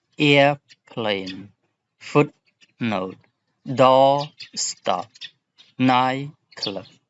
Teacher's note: Okay, and here we have to write two words with no space when the first word in the compound receives the most stress. Usually when both words have one syllable.